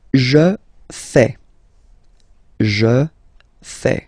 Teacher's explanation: Remember, final S not pronounced.